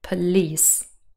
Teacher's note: police is stressed on the second syllable